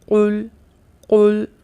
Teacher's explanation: جیسا پہلا ہی حرف ہے قل، قل، زبان کی جڑ اور تالو کا نرم حصہ آپس میں ٹکراتے ہیں اور نرم تالو زبان کے پچھلے حصے سے چپکتا ہوا محسوس ہوتا ہے۔ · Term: قاف